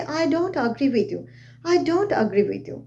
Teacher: my voice is falling Rising falling Rising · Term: falling Rising intonation